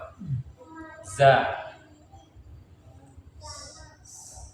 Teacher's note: Za makhrajnya di ujung lidah menempel pada ujung gigi seri bagian bawah.